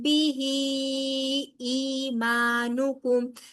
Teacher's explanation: میم ساکن کے بعد با آ رہا ہے، لہٰذا یہاں پر کیا ہوگا؟ اخفاء شفوی، یعنی کہ یہاں پر بھی غنہ ہوگا.